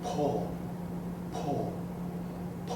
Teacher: no matter how soft you say po the air comes out and move the paper in Spanish the P has no puff